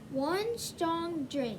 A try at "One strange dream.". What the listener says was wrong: Not strong. What does that E do to the A? That silent E at the end, what does it do to the A?